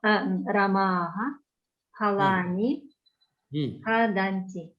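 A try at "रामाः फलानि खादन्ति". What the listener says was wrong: Correct. Ramaha phalani khadanti. Correct. Perfect sentences.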